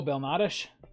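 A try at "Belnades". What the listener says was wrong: Belnade, yeah. You don't have to pronounce all The consonants.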